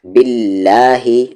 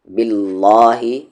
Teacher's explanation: لام جلالہ سے پہلے زیر ہے تو اس کی جو ساؤنڈ ہوگی وہ لائٹ ہوگی۔ باللہ، نہ کہ باللہ، یہ غلط ہے، لائٹ ساؤنڈ سے۔